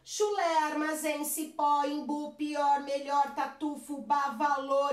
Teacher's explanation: Sempre a minha sílaba mais forte é a última. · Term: oxítonas